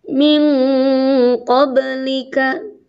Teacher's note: lidahnya sudah di qaf, sudah siap-siap di huruf qaf. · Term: ikhfa